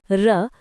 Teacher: उदाहरण य र ल व नोट य और व अर्ध स्वर ध्वनि जो कभी स्वर हो कभी व्यंजन र लुंठित जिसके उच्चारण में जीभ तालू से लुढ़क कर स्पर्श करता है